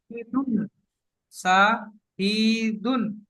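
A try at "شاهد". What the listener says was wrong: শাহিদুন নয়, দালকে সাকিন করতে হবে, তাহলে শাহিদ।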